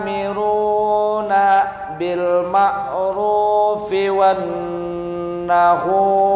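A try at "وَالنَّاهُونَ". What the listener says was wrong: Wanna panjang 1 alif. Kepanjangan 2 harokat.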